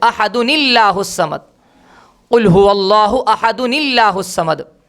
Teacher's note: تنوین کے نون کو حذف کر دیتے ہیں اور وہاں پر نون قطنی کو درمیان میں لا لیتے ہیں،